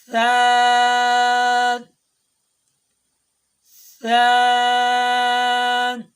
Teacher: ثا جب ادا کریں گے تو زبان کو اوپر والے دانتوں اور نیچے والی دانتوں کے درمیان میں رکھیں گے تب ثا ادا ہوگا